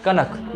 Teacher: इसमें नाक से थोड़ा उच्चारण निकालते हैं हल्का नाक से भी आवाज निकलता है कनक ये हो गया कनक इसको पढ़ेंगे कणक कणक हम अपना जीभ को इधर नहीं सटा रहे हैं।